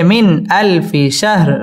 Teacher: মিন ইজহার গুন্না ছাড়া স্পষ্ট করে পড়তে হবে